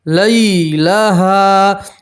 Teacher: یا لین کو آپ کھینچیں گے نہیں، یا لین کو آپ جلدی سے پڑھیں گے. یا لین کسے کہتے ہیں کہ یا کے اوپر جزم ہو اور اس سے پہلا حرف کے اوپر زبر ہو تو اسے یا لین کہتے ہیں، ٹھیک ہے.